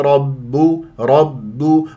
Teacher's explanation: رب الراء مفخمه هي مفتوحه والباء شديده مجهور مرققه